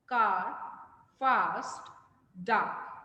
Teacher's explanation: the center this is the long sound uh car fast dark the center of the tongue is raised towards the soft palate and the lips are neutral